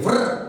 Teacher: आपकी जीवा पर्वत के अगले भाग से टकरा रही है। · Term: मूर्धा